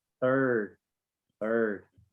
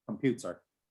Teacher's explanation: in rhotic dialects of English, they pronounce post-vocalic Rs. So R sounds that come after vowels, they say them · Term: rhotic sounds